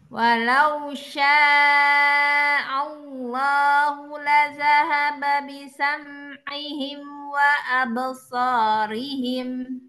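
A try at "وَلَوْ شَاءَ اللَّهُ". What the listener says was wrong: Walau syaa Allah. Ya Allahu. Tebal ya. Kalau ada huruf apa lafaz kalimat lafzi jalalah ini sebelumnya ada harokat fathah, maka Allahnya kita baca tebal. Allahu.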